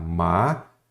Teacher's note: Então, a sílaba tônica é a penúltima. Então, ela é uma paroxítona terminada em ditongo.